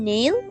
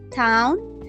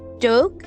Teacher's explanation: Alveolar. Here the obstruction occurs at the alveolar ridge, that funny ridge just behind the upper teeth.